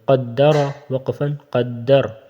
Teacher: را کے اوپر زبر ہے، اس کو موٹا پڑھیں گے، قدر وقفاً قدر، وقفاً میں بھی جب را کے اوپر سکون آ جائے گی تو اس سے پہلے زبر ہے، تو تب بھی اس کو موٹا ہی پڑھیں گے، ٹھیک ہے، پور پڑھیں گے، قدر وقفاً قدر۔